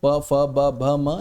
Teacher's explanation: प फ ब भ म ये ओष्ठ से ही बोले जाएंगे। हमारे दोनों ओष्ठ आपस में मिलकर ही इन्हें बोलते हैं। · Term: ओष्ठ्य